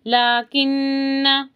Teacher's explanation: نون پر تشدید ہے، اچھے سے غنہ، اور ہم پڑھیں گے کیسے؟